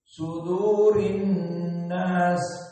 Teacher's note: nun al-musyaddadah memberikan wujubil gunnah